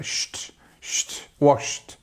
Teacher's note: this sh sound and the t goes into each other. It almost flows like sht, sht, washed.